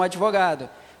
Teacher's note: t no caso de advogado é o d e o v é um encontro de duas consoantes em que as duas são pronunciadas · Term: encontro consonantal